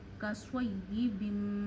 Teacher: स्वाद को आप मोटा पढ़िए क्योंकि हरूफ मुस्तालिया में से है। मुस्तालिया वो हरूफ होते हैं जो आप हमेशा हर हालत में मोटे पढ़ते हैं, तो स्वाद मुस्तालिया का हर्फ है, इसे मोटा पढ़िए।